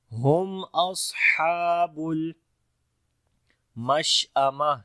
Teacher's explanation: شین کے اوپر صفت تفشی اور ہمس دونوں آئے گا، اور جب رکیں گے تو تا ہا بن جائے گی، مشأمہ۔